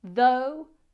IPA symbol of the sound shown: ðəʊ